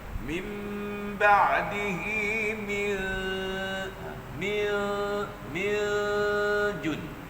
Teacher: Tengah lidah kita naik ke langit. Jadi masa tuan-tuan dengung min jun itu, tengah lidah tuan-tuan dah duduk kat langit dah, hampir dekat langit dah. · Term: hukum ikhfa